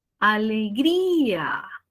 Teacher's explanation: otra secuencia de vocales la i con la a y la mayor fuerza de voz está en la vocal cerrada